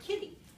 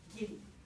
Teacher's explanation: i'm going to turn on my vocal folds and just leave them running all the way through this word rather than turning them off and on and off and on